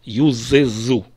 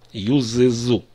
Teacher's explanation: Когда у нас идут два одинаковых звука подряд как здесь зумы Добавляем еще гласный э чтобы легче было произносить